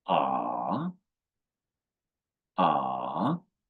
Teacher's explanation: The third tone falling first, then rising.